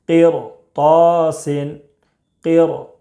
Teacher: اگر ہوگا تو را باریک نہ ہوگی بلکہ پر ہوگی۔ تو اس میں را ساکن کے بعد حروف مستعلیہ کے 7 حروف میں سے طا ہے، اس لیے را کو پر پڑھیں گے